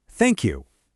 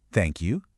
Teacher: my voice goes down at the end